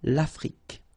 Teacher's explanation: Final E, it's only the K at the end that you will hear.